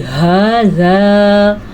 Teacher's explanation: ہاذا ہا چھاتی سے نکلے گا اور الف مدے کو بھی ادا کرنا ہے